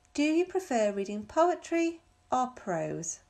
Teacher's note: The last case, number 5, in questions that offer choices. The speaker's voice rises on the first choice and falls on the last choice.